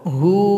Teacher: Hu dipanjangkan dua ketukan karena kita sukunkan huruf waw.